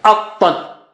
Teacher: A is low and Ta is very thick and high.